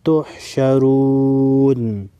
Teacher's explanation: را پر پیش ہے، را کو موٹا پڑھیں گے